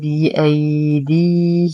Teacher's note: نتم كسرة الدال بعدها يا ساكنة فهو مد طبيعي. أما الياء الأولى فهي ساكنة ما قبلها مفتوح فهو حرف اللين، زمنه ما دون الطبيعي.